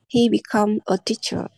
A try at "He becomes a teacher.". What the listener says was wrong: Thiếu Z.